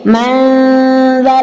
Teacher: Kemudian terakhir ada zal dan ada dha, itu juga harus dibedakan tipis dan tebalnya. Ketika zal maka dia dibaca secara tipis. Madzalladzi tidak boleh dibaca madzalladzi, tidak boleh karena dia adalah huruf yang tipis.